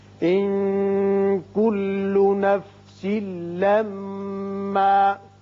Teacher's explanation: اس نون پہ اخفا کریں گے، نفسل یہاں سین کے نیچے 2 زیر تنوین ہے، ادغام بغیر غنہ ہوگا، میم مشدد ہے، حرف غنہ ہے، یہاں غنہ کریں گے۔